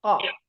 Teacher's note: paling belakang pada posisi menempel langit-langit bagian yang lunak yaitu daging paling belakang setelah tenggorokan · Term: pangkal lidah